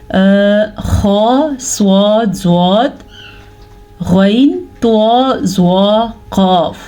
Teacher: یہ وہ 7 حروف ہیں جو ہمیشہ ہی موٹے پڑھے جاتے ہیں. انہیں حروف مستعلیہ کہتے ہیں.